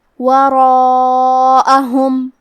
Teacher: کلمت وراءہم میں حرف الرا پہ زبر ہے لہذا ہمیں حرف الرا کو موٹی آواز میں پڑھنا ہے، اور کیونکہ اس کے بعد مد الف ہے، مد الف اپنے پیچھے والے حرف کا حکم لیتا ہے تفخیم میں اور ترقیق میں، لہذا ہمیں یہ مد کو بھی بھاری آواز میں پڑھنا ہے.